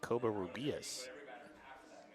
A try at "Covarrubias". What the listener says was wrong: No, actually, we were both wrong. It's Covarrubias. It's actually the first syllable, Covarrubias.